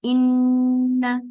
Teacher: और first level का गुन्ने का मतलब ये है कि आप अच्छी तरीके से यानी इसकी इंटेंसिटी को भी फील करें, इसके यानी जब आप गुन्ना करें तो आपको ये फील हो कि आपने पूरा गुन्ना किया है, यानी मुकम्मल नाक का इस्तेमाल किया है। जैसे इन, एक तो इंटेंसिटी आपको फील हो कि आपने पूरी नाक भर ली है। दूसरी चीज ये क्या है, इसकी जो ड्यूरेशन है वो 2 काउंट्स के बराबर। · जब आवाज साथ ही नाक में चली जाती है तो नून का लेटर मुकम्मल होता है। ठीक है, एक जबान वाला मखरज है इसका और दूसरा मखरज इसका नाक है, इसके बगैर ये कंप्लीट नहीं होता।